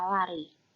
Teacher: Bunyi ini direalisasikan antara lidah dan bibir tanpa seluruhnya kontak satu sama lain. Lateral aproksiman yang dapat ditemukan pada tabel A yaitu lateral aproksiman alveolar yaitu dengan bunyi L. L merupakan bunyi bersuara.